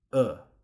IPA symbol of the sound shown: ʊ